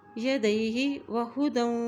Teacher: دال کی دو زبروں کو ہم واو کے ساتھ ملاتے ہوئے پڑھیں گے کیونکہ واو کے اوپر شد ہے